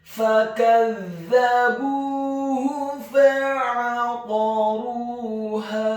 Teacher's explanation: Fakadzabuhu, huruf fa-nya dibaca fathah 1 harokat, huruf kaf-nya dibaca tipis tarqiq fathah 1 harokat, huruf za-nya dibaca tipis tarqiq ditasydidkan ditekankan fathah 1 harokat, huruf ba-nya dibaca tipis dhammah 2 harokat karena setelahnya ada huruf wawu sukun, dan huruf ha-nya dibaca tafkhim tebal dhammah 1 harokat.